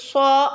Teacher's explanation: سو ادا ہوگا، اونچا، موٹا اور بلند۔ سو کیونکہ صاد حروف مستعلیہ میں سے ہے جس کو موٹا کر کے پڑھا جاتا ہے۔